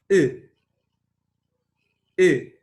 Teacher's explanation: short U is a back, half-closed, loosely rounded vowel. The lip position is loosely rounded.